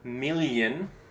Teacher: So it's like a L with like a Y sound after. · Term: double L